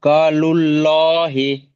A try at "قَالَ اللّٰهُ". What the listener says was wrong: ক্বালাল্লাহু, ক্বালাল্লাহ। হি কোথায়? হু। লহু।